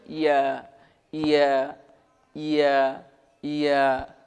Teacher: ইয়া জিহুবার মাঝ হতে নরমভাবে আদায় হবে